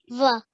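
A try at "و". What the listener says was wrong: So when we're reciting this letter is a wa sound. So there's two letters in the English alphabet. One is a V sound. When you say V, try that once. V. Your teeth touch your lips. But when you say the wow, or the W, sorry, your teeth don't touch on your lips, do they?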